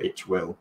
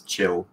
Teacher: If they're saying I will, itch will, then it often becomes chill or something like that.